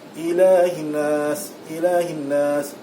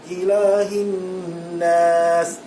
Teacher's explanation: Wajibul gunnah yang sempurna mesti lebih daripada satu harakat.